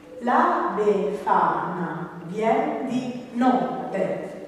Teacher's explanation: verso delle filastrocche infantili La befana vien di notte questo è l'ultimo accento tonico e anche ritmico e cade sulla settima sillaba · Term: ottonario